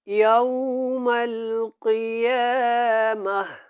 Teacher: وَالَّذِينَ اتَّقَوْا وَالَّذِينَ اتَّقَوْا فوقهم والذین اتقوا فوقهم یوم القیامہ یہاں پہ تا گول جو ہے یہ ہا میں بدل جائے گی، اور یہاں پہ قاف جو ہے یہ موٹا پڑا جائے گا۔